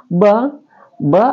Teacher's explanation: ba adalah asyafatain atau keluar di dua bibir